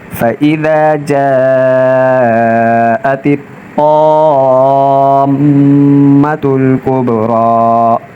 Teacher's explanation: یہاں طا اور میم مشدد ہیں تو ان کو ذرا رک کر سختی کے ساتھ پڑھیں گے اور طا کو موٹا پڑھیں گے